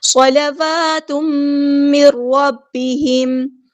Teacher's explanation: صاد ہمارا heavy letter ہے، پورا ادا کریں گے، لام باریک لائٹ لیٹر ہے، واو پر حرکات مد آئی ہے تو ایک الف کے برابر لمبا کریں گے۔ تنوین کے بعد میم آیا ہے، یہاں پہ ہو رہا ہے ادغام مع الغنہ، صلوات من ربہم۔